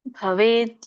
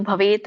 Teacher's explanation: ಕೂಡಿ ಹೇಳುವಾಗ ಭವೇದ್ ಅಂತ ಆಗತ್ತೆ, ಬಿಡಿಸಿ ಹೇಳುವಾಗ ಭವೇತ್ ಅಂತ ಹೇಳ್ತಾರೆ.